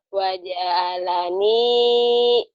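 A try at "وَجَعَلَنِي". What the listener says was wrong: Ainnya keluarin. Ain.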